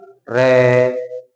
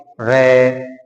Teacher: जिह्वा को देखिए, रे, तो यानी कि 2-3 बार कंपन करती है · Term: प्रकंपित व्यंजन